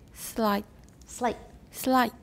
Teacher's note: so it's going to be short and the vowel is going to be higher